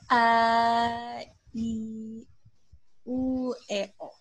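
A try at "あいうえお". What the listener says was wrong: Kaya lang, yung pronunciation masyadong malambing, ano? Because it should be abrupt stop lagi when you say. So, you say, A, I, U, E, O. Parang medyo bitin yung hininga.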